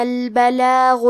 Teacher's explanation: کلمت البلاغ میں حرف الغین کی ادائیگی حلق کے اوپر والے حصے سے ہے، غین حروف التفخیم میں سے ہے تو ہمیں غین کو موٹی آواز میں پڑھنا ہے